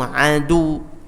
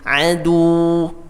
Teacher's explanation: Nah, ini perhatikan tambahan ya pelajarannya, ketika dia tasydid, bayangkan atau kita prakteknya itu dengan cara didobelkan hurufnya ya dalam bentuk sukun. Jadi kalau waw ada tasydidnya terus di akhir, maka wawnya seakan-akan ada dua waw sukun.